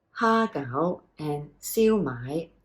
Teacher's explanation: to pronounce them correctly in Cantonese it is the high tone haa and sui okay so both are High T te mid Rising combinations hago